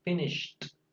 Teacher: se pronuncia finished con una T al final. Esa ED suena como una T.